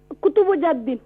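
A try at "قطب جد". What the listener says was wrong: MashaAllah.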